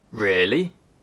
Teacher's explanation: A rising tone can indicate surprise.